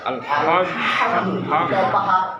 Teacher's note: হলকের মাঝখান থেকে শোষ করে পড়তে হয়